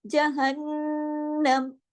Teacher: یہاں پر ڈبل نون ہے تو یہاں پہ غنہ کیا بڑا اکمل · ہم نے یہاں پہ عارضی سکون بھی کیا ہے، جہنموں کے بجائے ہم نے جہنم پڑھا ہے